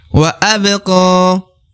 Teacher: huruf pantulnya huruf ba berada di tengah. Maka dikolkolah ya, tipis-tipis saja. Wa abqa. Ya, pantulnya tipis-tipis ya.